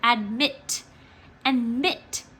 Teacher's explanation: our second syllable because this is the word admit and mit the second syllable is the one that we say longer and louder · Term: accent